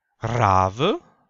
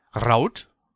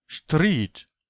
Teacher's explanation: Das R wird in der Regel gerollt.